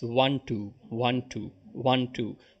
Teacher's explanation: in a trochaic passage you hit the first syllable